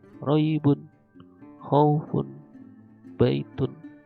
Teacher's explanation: Nah, itulah yang dinamakan mad lain, mad yang lentur-lentur saja, tidak panjang, cuman dibengkokkan